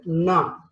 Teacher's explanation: Again it is voiced, place is alveolar. Tip of the tongue is touching teeth ridge, right? Alveolar, and manner is nasal.